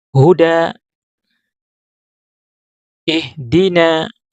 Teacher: ketika kita ucapkan huda maka akan mengalir udara ya, tidak ada yang tertahan ya. Di sini akan mengalir udara melalui pita suara. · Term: huruf H